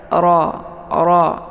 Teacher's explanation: Kemudian ra dibaca pendek, dan hukum bacaan ra ini adalah dibaca tebal karena ra-nya berharakat fathah. Jadi cara bacanya ujung lidahnya terangkat ke langit. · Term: ditebalkan